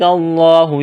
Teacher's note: لفظ اللہ کے نام سے پہلے زبر ہے، لفظ اللہ کے نام کو موٹا کرنا ہے